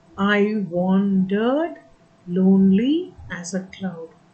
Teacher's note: there are eight syllables per line and the stress falls on the second syllable of each foot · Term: tetrameter, iambic tetrameter